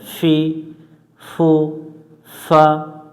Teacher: আমরা এই অক্ষরটা পড়ার সময় মুখ থেকে হালকা একটু বাতাস বের করব